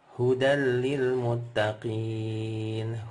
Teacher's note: Idgham lebur huruf nun sukun atau tanwinnya masuk ke huruf lam dan ra, tapi bila gunnah, nggak pakai dengung ya, nggak pakai dengung, nggak pakai ditahan-tahan lama-lama, langsung aja masuk ke huruf lam atau ra-nya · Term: idgham bila gunnah